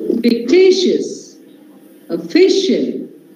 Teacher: Such words take stress on second last or the penultimate syllable